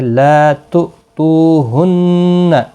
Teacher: لا تؤتوہن، تو پہلا تو جو ہے اس کو جھٹکے کے ساتھ پڑھیں کیونکہ حمزہ ساکن ہے۔ دوسرا تو ہے، واو مدہ ہے، 1 الف کی مقدار کے برابر کھینچ کر پڑھا جائے گا، نون مشدد پر غنہ ہوگا۔